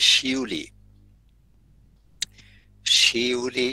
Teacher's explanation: তো ই শ্রুতি যেমন হচ্ছে শিউলি, শিউলি, শির এর পরে ই, তারপরে উতে যাওয়ার জন্য মাঝখানে একটা তোমার ধ্বনি উৎপন্ন হয়ে যায়, সেটাকে বলে অর্ধস্বর, ওটা হচ্ছে ই শ্রুতি।